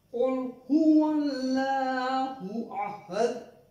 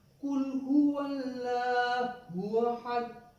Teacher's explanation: And if we change Qaf, which is having two nukat, two simple Kaf, both are having the sounds alike but different articulation points. Qaf is originating from different articulation point and pronounced heavily, thick, while Kaf is simple with thin voice. If we change, replace the thick voice Kaf with thin voice Kaf, it becomes Kul huwallahu ahad, and the meaning totally changed.